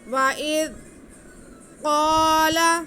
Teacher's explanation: وَإِذْ قَالَ، قاف پہ زبر ہے، ساتھ میں الف ہے، تو قاف کو ہم کھینچ کے پڑھیں گے، اور قاف حروف مستعلیہ ہے، اس لیے ہم اسے موٹا کر کے پڑھیں گے